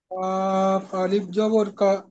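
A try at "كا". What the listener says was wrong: কা, কা, একটু টান দেন না ভাই, এক আলিফ টান হবে।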